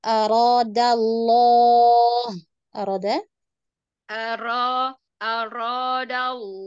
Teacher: r-nya Dibikin mudah langsung ke lidah yang digetarkan